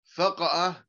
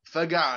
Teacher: يقلب الهمزة إلى عين